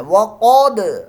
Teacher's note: وقد دال ساکن میں قلقلہ ہو رہا ہے